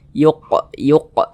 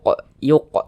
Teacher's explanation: salah satunya huruf qaf kalau dia sukun dipantulkan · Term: Qalqalah sugro